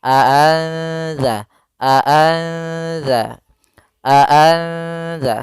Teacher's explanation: tapi disamarkan ke huruf setelahnya maka di sini cara membacanya adalah nunnya disamarkan kepada huruf Dal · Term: ikhfa